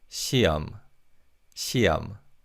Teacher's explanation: The 히읗 in the second syllable is silent in fast speech.